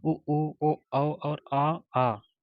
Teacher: यह पश्च स्वर में आते हैं यानी कि जीभ के पिछले भाग से जो बोला जाता है